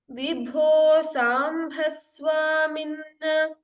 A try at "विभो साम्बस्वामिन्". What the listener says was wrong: Samba alpa prana. Sa amba. Okay. Samba. Bibho samba swamin.